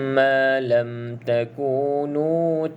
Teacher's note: kena cukup dengung dua harakat Ok dengung dua harakat dan pastikan mulut tu tutup rapatlah